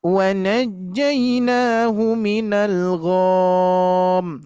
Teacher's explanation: Nah, jadi tanpa didengung, cuman gom saja. Terus ada kesalahan yang berikutnya yaitu memanjangkan ghain.